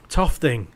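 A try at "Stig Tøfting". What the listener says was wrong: Yeah, although probably not pronounced like that. It's got an O with a line through it.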